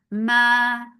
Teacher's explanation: 2 counts long without going into your nose.